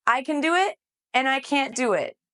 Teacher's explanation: the t at the end of can't often becomes very weak